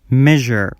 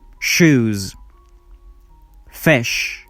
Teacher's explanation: the first sound is voiced the second one is unvoiced